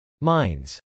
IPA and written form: mˈaɪnz (mines)